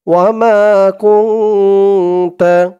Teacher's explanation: এখানে ইকফা গুন্না করতে হবে, কারণ নুন সাকিনের পরে ইকফার 15 হরফের এক হরফ তা আসছে, তাই এখানে ইকফা অর্থাৎ নাকের ভিতরে লুকিয়ে গুন্না করে পড়তে হবে।